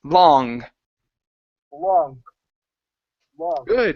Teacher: Instead of long, give me an ah sound.